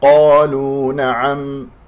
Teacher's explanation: ولا تقول قالوا، لا تكور الشفتين، لا إعمال للشفتين في نطق حروف الاستعلاء السبعة، مفخم مرتبة أولى لأنها مفتوح بعدها ألف، اللام مرققة ونضم الشفتين فيها وفي الواو